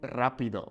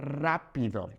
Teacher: Even though we have a singular R starting this word, okay, rápido, a singular R that is at the beginning of a word will be rolled